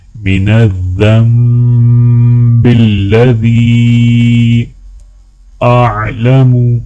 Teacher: او خطأ سرا او علانیة وَأَتُوبُ الیہ من الذنب الذی، من الذنب ذال کو جب میم کے ساتھ ملائیں گے تو غنہ کیا جائے گا، اور لذی کے یا کے اوپر مد ہے تو تھوڑا سا کھینچ کر پڑھا جائے گا۔